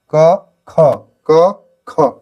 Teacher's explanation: क अल्पप्राण ख महाप्राण